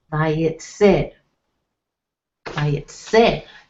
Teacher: So you can see the emphasis or the stress will be on the last syllable of the word